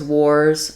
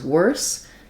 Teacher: wars has the OR and the Z sound, and worse has the ER or and the S sound